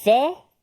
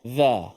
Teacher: bezanya ta ada angin okey Za tidak ada angin Za kat sini tak ada angin